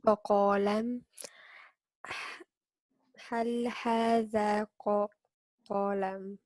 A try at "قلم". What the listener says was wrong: So right here, we want to make sure that we're not adding an extension, right? Because we have a short vowel.